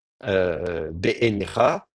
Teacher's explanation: quand on prononce à l'israélienne, on va dire, be-enecha, on a l'impression qu'on a trois fois le son E.